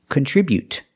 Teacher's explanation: the stop T is more natural and more common contribute to stop the air with the tongue and don't release the T contribute remember to put the stress on the second syllable contribute